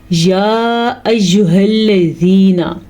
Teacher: یا کے اوپر آپ کو مد نظر آ رہی ہے، اس مد کو لمبا کر کے پڑھنا ہے کیونکہ اس مد کی مقدار تقریباً 3 الف کے برابر ہے